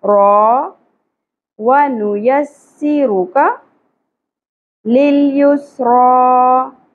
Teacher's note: را کے اوپر کھڑی زبر ہے پر بھی کریں گے اور ایک الف کے برابر کھینچیں گے